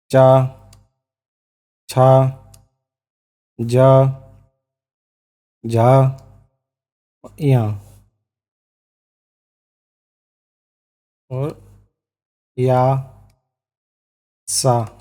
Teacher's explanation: इनका उच्चारण स्थान तालु से करते हैं। ये तालव्य होते हैं।